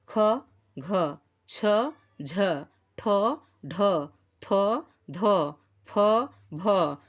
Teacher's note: महाप्राण व्यंजनों के उच्चारण में हकार जैसी ध्वनि विशेष रूप से रहती है। जैसे ख जब हम बोलते हैं, घ, छ, झ, तो लगता है कुछ ह ध्वनि उच्चरित हो रही है अंत में।